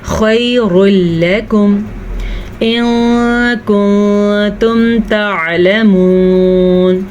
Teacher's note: خیر لکم، را کو پر پڑھ لیں، لام کو پر نہیں کرنا. اب میں ایک اہم چیز آپ کو پھر سے بتاتی ہوں، اکثر را کو پر کرتے کرتے لوگ لام کو بھی پر پڑھ لیتے ہیں، یعنی کہ خیر لکم اس طریقے سے، یہ غلط ہے.